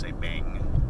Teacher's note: So the way you say bank in Thai is you drop the K and you just say bang.